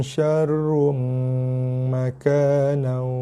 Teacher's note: Dengung idgham kena sentuh. Apa yang sentuh? Bibir sentuh. Bibir atas bawah kacip.